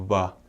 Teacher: And they don't say their V's like English. In English, we go va. They use their lips and go va.